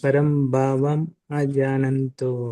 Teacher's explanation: ಮಜಾನಂತೋ ಅಂತ ಹೇಳಬೇಡಿ ಪರಂಭಾವಂ ಮತ್ತೆ ಗ್ಯಾಪ್ ಕೊಟ್ಟು ಅಜಾನಂತೋ